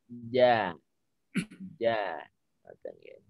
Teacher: Jadi nggak ada nafas yang keluar.